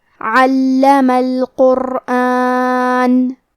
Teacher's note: کلمت علمہ میں عین کے ادائیگی حلق کے درمیان والے حصے سے ہے. · حرف اللام کی تشدید کو ظاہر کریں گے اور اسے 2 حرف کے برابر پڑھیں گے.